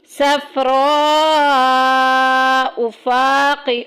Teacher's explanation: فا میں دیکھیں الف پیچھے زبر آ گئی، الف مدہ کا قاعدہ جاری ہو رہا ہے، 1 الف کے برابر لمبا کریں گے۔